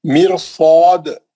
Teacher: ہم اس کی مثال کیسی ہے؟ مرصاد, میم کے نیچے زیر ہے, را ساکن ہے, لیکن بعد میں جو ہے حروف مستعلیہ آ گیا را کے بعد, تو یہ را کو موٹا پڑھ کے مستعلیہ کا حرف پڑھیں گے. مستعلیہ کا حرف موٹا پڑھنے کے لیے آپ را سے سٹارٹ لے رہے ہیں, کیونکہ اس کو پتلا کر کے ایک دم موٹا نہیں کر سکتے. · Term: را موٹی